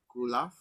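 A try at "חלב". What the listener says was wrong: Kok bisa U, Pak? Tanda bacanya, Pak. Garis-garis lurus, Pak. Garis lurus. Semua yang lurus adalah A. Halaf. Halaf. Halaf.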